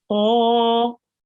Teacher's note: So with the qaf, remember it's a thick letter and we will round our mouth and pronounce it qa